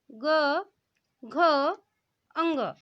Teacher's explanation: आपके गले में कंपन हो रहा है, बिल्कुल हो रहा होगा। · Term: सघोष व्यंजन